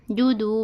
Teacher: واو مدہ ہے، اس کو دو حرکت کے برابر کھینچ کر پڑھنا ہے